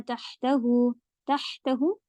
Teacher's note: हा पे अच्छा जोर दीजिएगा कि हलक के बीच के हिस्से से होता है